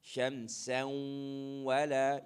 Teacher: You merge the noon sound into the waw. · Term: idgham with ghunna